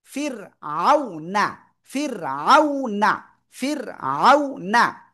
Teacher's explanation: র সাকিন এবং তার ডাইনে যদি জের হয়, রটা চিকুন করে পড়তে হয়। ফা রজের ফির, ফির।